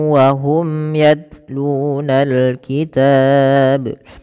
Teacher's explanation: memasukkan tanwin yang ada pada lafal in kepada huruf wau dan ditahan dua harakat · Sama, ada hukum bacaan sebagaimana ala syai'in wa qalatil yahud, yaitu ada bacaan idgham bi gunnah. Cara membacanya memasukkan tanwin yang ada pada lafal in kepada huruf waw dan ditahan 2 harakat.